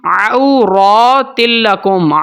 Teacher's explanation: را کے اوپر کھڑی زبر ہے تو اس را کو بھی موٹا کر کے پڑھیں گے